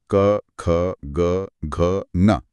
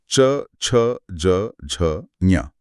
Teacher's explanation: इन्हें स्पर्श व्यंजन कहते हैं क्योंकि इन्हें बोलते समय हवा को मुंह में कहीं ना कहीं पूरी तरह रोका जाता है। · क गले से और च में जीभ ऊपर लग रही है।